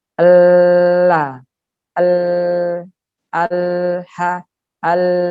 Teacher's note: Kalau lam, ujungnya nempel utuh, kemudian angin, udara keluar dari samping-sampingnya. Atau suara dari sampingnya.